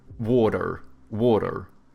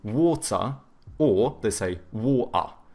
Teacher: You know how Americans, they have like soft T's and then they pronounce their R's, so they go like water, water, you know? Whereas like the British, they tend to have either hard T's or they do like the glottal T, so but then they do a schwa instead of pronouncing the R, so they say water or they say water.